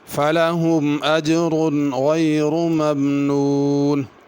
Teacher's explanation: اجر کی را کو پر پڑھنا